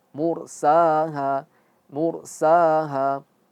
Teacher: mu tebal, ronya tebal, munya tetap tipis, tapi ronya yang menjadi tebal